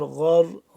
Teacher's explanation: غین را زبر غر، غین بھی موٹا را بھی موٹا